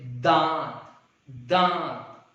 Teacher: वह वर्ण जिसका उच्चारण नाक और मुंह दोनों से होता है, नाक और मुंह, इसमें क्या था, अनुस्वार में बिंदी में क्या था, केवल नाक से हो रहा था, बट इसमें नाक और मुंह दोनों से होता है, उसे हम लोग क्या कहते हैं, अनुनासिक कहते हैं।